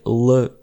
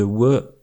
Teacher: Certaines personnes de cette région prononcent aussi le Ł [ɫ] au lieu de [w]